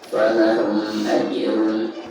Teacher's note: Baik, perhatikan di sini ada huruf mim sukun lalu berhadapan dengan huruf hijaiyah selain huruf ba dan huruf mim lagi ya. Maka dihukumi izhar syafawi dan cara membacanya itu harus dijelaskan ya.